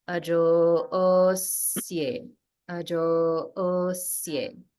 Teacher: the jo is a dirgha swarita, and then there is also holding after dirgha, holding on the is.